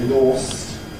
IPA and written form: lɔːst (lost)